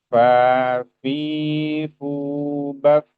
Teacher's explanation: Fa fi fu baf akan keluar hamas yang cukup ya, cukup banyak ketika kita menuturkan huruf fa tadi.